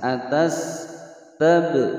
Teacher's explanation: Atas, atas sin berharokat sukun dibaca mengeluarkan desisan. Atas tab, ba berharokat sukun qalqalah sughra